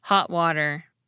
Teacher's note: Listen for my glottal stop at the end of the word “hot” in this next phrase, along with an alveolar flap in the next word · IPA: ho[ʔ] wa[ɾ]er